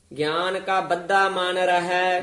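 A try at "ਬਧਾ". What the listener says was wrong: ਬੱਦਾ ਧੁੱਦੇ ਨਾਲ ਉਚਾਰਨ ਕਰਨਾ ਹੈ, ਬੱਦਾ ਨਹੀਂ ਕਹਿਣਾ।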